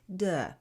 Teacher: we let the vocal cords go on vibrating and we produce d